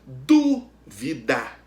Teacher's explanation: O du é a antepenúltima sílaba, é a tônica. Então, a palavra dúvida é proparoxítona. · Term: sílaba tônica